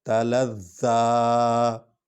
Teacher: لام اور زوئے کو اکٹھے پڑھیں گے کیونکہ اس پر شد ہے اور کھڑی زبر ہے، اس لیے اس کو لمبا کر رہے ہیں